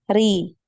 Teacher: Jadi tipis dia biasa, ri, nggak naik, pangkal lidahnya tidak naik